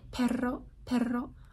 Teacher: In Spanish, you're a Spanish speaker, and a word like perro, perro, I'm kind of exaggerating it, but the ra, that's a alveolar trill. So it's the same place as T or D, da da da da da, but you're doing it like really fast.